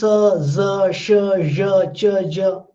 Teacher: then you will find that acoustically they have this hissing quality. You know, like how a snake hisses. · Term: sibilant